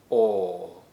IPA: ɔ: